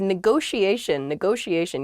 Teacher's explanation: there are two t's in this but neither t is a hard t they're both very soft that sh sound because they're followed by the i and another vowel that she